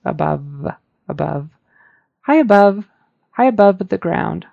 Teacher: I think the V could have been pronounced a little better just make sure your teeth are on your lower lip and it vibrates